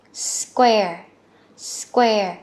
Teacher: mà nó là cờ con bật hơi ra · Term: âm cờ